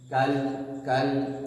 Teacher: جھٹکا نہیں دیں گے لام کو بالکل, لام میں کوئی قلقلہ وغیرہ کچھ نہیں ہے